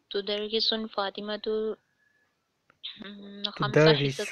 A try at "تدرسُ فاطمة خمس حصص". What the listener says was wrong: تدرسو دم ہے تنوین نہیں ہے۔